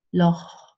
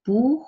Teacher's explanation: Loch is a little bit further in the back. Loch, and it happens in combination with different vowels.